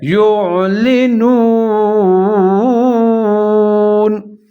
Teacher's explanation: واو ساکن، واو مدہ، اس کو کھینچ کے پڑھیں گے کیونکہ اس سے پہلے نون کے اوپر پیش ہے